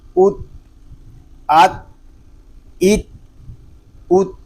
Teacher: اس کو ات نہیں پڑھیں گے کیونکہ تا میں کلکلا نہیں ہوتا